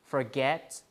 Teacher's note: the stress is on the root, which is get, because for is a prefix